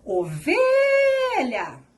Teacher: Perceberam que o V foi o que eu falei de maneira mais prolongada? Essa é a sua sílaba tônica.